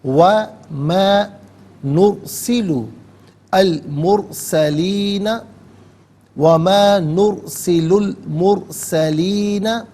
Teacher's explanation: وَمَا نُرْسِلُ الْمُرْسَلِينَ، وَمَا نُرْسِلُ الْمُرْسَلِينَ، نرسلو میں را ساکن ما قبل نون پر پیش اسے پر کر کے پڑھیں گے، اور مرسلین میں بھی را ساکن ما قبل میم پر پیش ہے، پر کر کے پڑھا جائے گا۔ نرسلو میں لام پر پیش ہے، اسے المرسلین کے لام ساکن کے ساتھ ملائیں گے، درمیان میں سے الف یعنی حمزہ کو حذف کریں گے۔